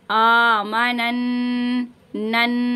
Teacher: यहाँ पे नून मुशद्दद का गुन्ना कीजिएगा और 1 अलिफ की मिकदार खींचिएगा